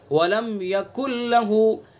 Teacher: دیکھیں یہاں نون کی کوئی آواز نہیں ہے، نون بالکل سائلنٹ ہو چکا ہے یہاں پر، تو یہ مکمل ادغام ہو گیا، اس لیے اس کا نام ہے ادغام تام۔ نون ساکن کے بعد لام ہے تو یہاں پر ادغام تام ہو گیا ہے، نون کی آواز بالکل ختم ہو گئی۔